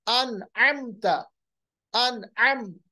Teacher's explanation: मीम को अदा किया, ना हमने गुन्ना किया ना हमने इख्फा किया, बल्कि फौरन जल्दी से अदा किया। अन अमता, अन अमता, अम, मीम को पढ़ा और आगे बढ़ गए, बिल्कुल हमने देरी नहीं की, ना इख्फा किया ना गुन्ना किया। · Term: इजहार